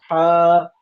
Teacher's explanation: ہوا نکلے گی تیزی کے ساتھ باہر کی طرف، اور بیچ حلق سے ہا ادا ہوگی